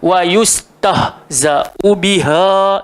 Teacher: Huruf ha tu keluar dekat bawah tekak sekali ni.